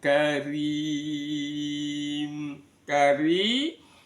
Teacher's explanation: di ujung lidah digetarkan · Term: ro dibaca tarqik